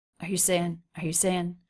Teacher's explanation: R and U not reduced, but very low in pitch, said very quickly.